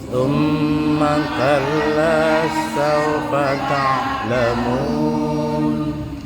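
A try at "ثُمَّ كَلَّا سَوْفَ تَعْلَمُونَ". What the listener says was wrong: Ya, perhatikan mim tasydid summa ya, itu 2 ketukan. Summa kalla saufa. Iya, jadi perhatikan mim tasydidnya dipanjangkan. Bukan dibaca summa kalla summa. Kalau summa nggak ada panjangnya tapi ditahan. Summa kal. Ada perbedaannya ya. Summa kalla saufa ta'lamun.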